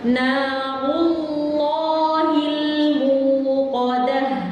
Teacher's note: dikata narullah itu rohnya tebal, kemudian lam di ismul jalalahnya juga tebal karena didahului dengan huruf yang dhammah, tebalnya double ya.